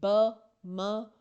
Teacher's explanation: ब, म, ये तीनों वो साउंड्स हैं जब तक हम दोनों लिप्स को आपस में टच ना करें ये प्रोड्यूस नहीं हो सकती। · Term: लेबियल साउंड